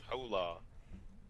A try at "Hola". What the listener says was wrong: just pronounce the H? Hola.